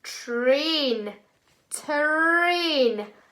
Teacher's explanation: sometimes the way we say it, it does sound like ch is in this word